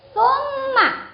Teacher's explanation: Ada mim tasjid, ini bacaan hunnah, maka harus dibaca dengung karena hunnah artinya dengung. Dengung itu tadi sudah saya jelaskan, dengung itu haknya adalah 1 alif atau 2 harokat. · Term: gunnah musyaddadah